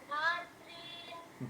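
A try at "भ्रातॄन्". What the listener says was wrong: ভ্রা, এই যে ভয় র ফলা আছে, ভ্রা, ঠিক আছে, ভ্রাতৃন, ঠিক আছে,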